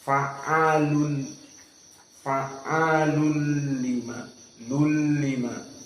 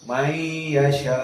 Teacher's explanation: Nunnya dihilangkan masuk kepada lam. Fa'alul bukan lun, namun idghamnya bi ghairi gunnah. Karena di sini lam tidak ada makhraj dari khaysum.